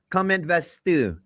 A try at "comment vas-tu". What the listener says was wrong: say comment vas, and it's comment va, but beside that, it's perfect.